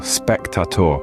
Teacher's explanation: In spectator, the stress is on the first syllable, spectator.